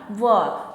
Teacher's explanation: व जो वर्ण है इसका उच्चारण करते समय हवा दांत से टकराकर होंठों के पास टकराकर तब बाहर निकलती है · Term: दंतोष्ठीय